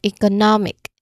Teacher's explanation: Notice how the stress is on the syllable right before the ick